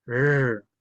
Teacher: Cuando lo pronunciemos, apuntaremos hacia atrás la punta de la lengua. Eso en términos lingüísticos se llama retroflejo. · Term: R retrofleja